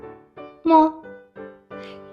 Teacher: The action of the lips still same, but the airflow will vibrate your vocal cord and come out from your nose